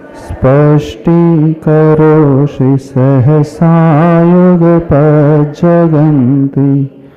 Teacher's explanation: इस श्लोक में तीनों ही सकार का उच्चारण हो रहा है। दंती स, तालव्य श और मूर्धन्य श।